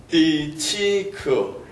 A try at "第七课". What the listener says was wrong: 지금 띠 했거든요. 띠 하면 일성이 돼요. 띠. 예, 띠. 네, 반드시 내려와 줘야 됩니다. 띠. 치크.